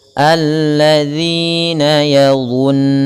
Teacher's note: Kemudian dha sama sebagaimana huruf zal, cuman dha lebih tebal karena dia pangkal lidahnya ikut terangkat, berbeda dengan zal yang pangkal lidahnya ikut tidak terangkat dan di bawah.